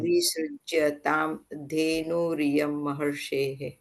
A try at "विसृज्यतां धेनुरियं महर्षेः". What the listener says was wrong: विसृज्यतां वीण दीर्घन विसृज्यतां धेनुर् उकारान्त अपि ह्रस्वमस्ति। अत्र विसृज्यताम् एकमेव पदमस्ति, क्षम्यताम्।